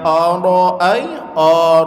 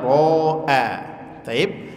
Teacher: dengan huruf tebal dan huruf tipis yang pertama Hamzah tipis kemudian huruf ro tebal dan hamzahnya tipis lagi